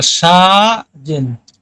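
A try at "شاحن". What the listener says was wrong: শাহজেন পড়তেছেন কেন আপনি? জের পান কই? শাহিন।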